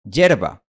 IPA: ɟʝɛɾ.β̞a